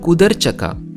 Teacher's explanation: Mat arrange karo is verb plus akka, so it should be kudurchaka. But Telugu aligns the vowel of the verb with the suffix, making it kudarchaka.